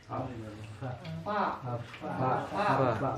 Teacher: Bibir bawah batnu sapati sufla wa ra'sus sanaya ulya. Bibir bawah bertemu dengan dua gigi sanaya, dua gigi seri bagian atas.